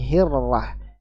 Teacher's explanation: dari punggung ujung lidah bertemu dengan pangkal, dua gigi seri atas bagian dalam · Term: huruf ra